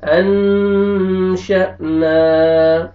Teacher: اخفا نون ساکن کے بعد شین آ رہا ہے اور الف مدہ, الف سے پہلے زبر آ رہا ہے, نون کو آپ نے کھینچنا ہے